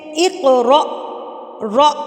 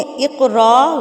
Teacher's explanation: را کو الف کے ساتھ ملانا ہے تو را جھٹکا دے کے پڑھا جائے گا